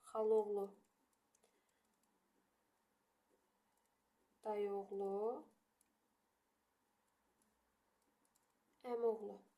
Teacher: bunlarda iki qoşa saitlərdən biri düşür, amma digəri uzun tələffüz olunmur